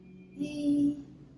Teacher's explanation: So the vocal cords close when she says E.